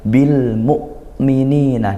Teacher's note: ditekan seolah berhenti suaranya karena nekan bil mukminina tidak perlu dialirkan itu syiddahnya hamzah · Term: hamzah sukun